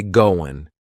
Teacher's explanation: That final G in the word going is going to be cut off and we'll just say going.